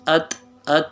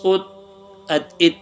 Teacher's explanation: کیونکہ حروف قلقلہ میں سے نہیں ہے، اس کو ہلانا بھی نہیں ہے۔